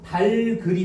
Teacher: 겹받침이면 뒤에 것만을 연음한다 그랬잖아. 그러면 겹받침 중 뒤에 것이 기역이고 기역이 뒤로 넘어가니까 달글이 되는 거야